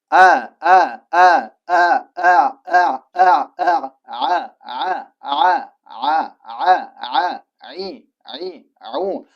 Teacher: Maxraji halqumning o'rta qismida. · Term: ain harfi